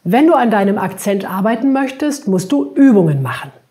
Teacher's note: hier habe ich das Übungen betont